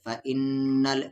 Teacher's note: نون پہ شد ہے تو یہاں پر غنہ ہوگا